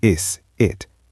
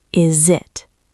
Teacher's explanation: The s vibrates and we link it. Is it? >> Listen to that buzz.